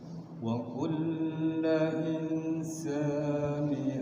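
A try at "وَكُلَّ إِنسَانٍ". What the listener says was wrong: Insanin itu tanwin ya, Pak. Wa kulla insanin alzamnahu ta'irahu fi 'unuqi.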